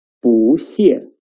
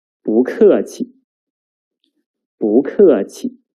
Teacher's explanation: The original tone of 不 is the fourth tone, 不. But when 不 meets the character with the fourth tone, its tone will change into the second tone.